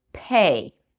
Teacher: When P's, K's, and T's appear at the beginning of words or at the beginning of stressed syllables, they're aspirated, which means they have this little H sound right after, but it's a lot shorter than a regular H. It's almost unnoticeable.